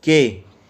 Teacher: For instance, in the production of the vowel in the English word K, it can be felt that the front of the tongue is being raised very high towards the hard palate